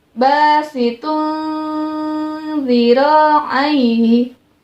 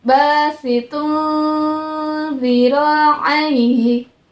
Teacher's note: Perhatikan tanwin bertemu dengan dha-nya ya. Harus samar-samar dan juga didengung.